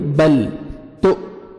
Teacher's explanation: حرکت ہلانا نہیں ہے، بل ایسے نہیں پڑھیں گے، بل تو، حمزہ ہے جھٹکے سے پڑھیں گے، حمزہ ساکن ہے ، بل تو ثا پڑھیں گے اور را کو موٹا کر